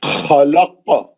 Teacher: خلق، پہلا خا جو ہے اوپری حلق کا ہے، کھردرا آواز ہے، بھاری آواز ہے. اور خاف کو آپ روک دیے آیت کے اوپر، زبر نکال کے ساکن کر دیے تو انہیں خلخلہ کبرا ہو گیا. خلق ہے نا، خلخلہ کبرا ہو گیا.